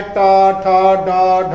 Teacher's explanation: जीभ दांतों से ऊपर यानी खुरदा स्थान को स्पर्श करती है, जीभ मूर्धा से स्पर्श करती है